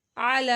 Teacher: لام کے اوپر کھڑا ماد تھا، اس کو بھی لمبا کیا